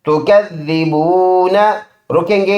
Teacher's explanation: رکیں گے، یہ زبر سائلنٹ ہو جائے گا، تکذبون بن جائے گا